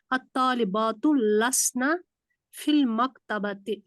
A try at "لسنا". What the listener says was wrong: لسنا کو لمبا نہیں کرنا, لسنا لسنا چھوڑ دینا بس, لسنا.